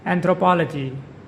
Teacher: Anthropology. With the stress on the third syllable, the word is pronounced anthropology.